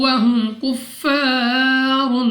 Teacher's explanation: میم ساکن کے بعد کاف، یہاں پہ ہم نے بغیر غنہ کے پڑھنا ہے